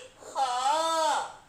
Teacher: इसका जो उच्चारण है ये स्वर यंत्र मुखी है, यानी कि काकल्य व्यंजन है